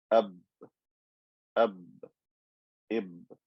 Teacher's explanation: Ba with sukoon is created with the lips coming together.